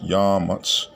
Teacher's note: But this is from the Shabbalat ba stem. So we have a stress on the first syllable to distinguish it from the other stems.